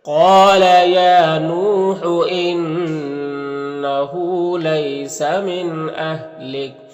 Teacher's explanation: یہاں پر وقف کریں گے تو کاف کا زبر سکون سے بدل جائے گا · انه نون مشدد غنہ ہوگا، ہاں الٹا پیش ہے، اسے ایک الف کے برابر کھینچیں گے